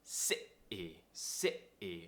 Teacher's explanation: some tension in our throat and we're cutting off the sound before the T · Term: glottal T